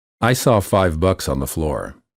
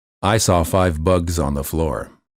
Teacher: the first sentence has a word with the voiceless consonant and the second sentence has a word with a voiced consonant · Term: voiceless and voiced consonants